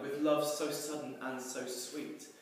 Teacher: the really sibilant sounds, repetition of the letter S, makes it sound like whispering, which again is something we associate with love and affection.